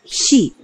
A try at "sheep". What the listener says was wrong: 그렇게 짧게 하면 안 돼. 그러면 개가 돼. sheep. 이건 배예요. 배. sheep. 이건 배고 양은 sheep. sheep.